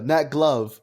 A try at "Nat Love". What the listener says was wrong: The G is silent.